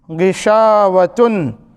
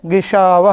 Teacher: تائے تانیث گول تا اور تا مربوطہ کے بارے میں جب اس پر ہم وقف کریں گے تائے تانیث پر، تو تائے تانیث یا جسے ہم کہتے ہیں تا مربوطہ یا گول تا، وہ ہا ساکنہ بن جائے گی۔ تو غشاوتن سے وقف کریں گے، غشاوہ ہو جائے گا۔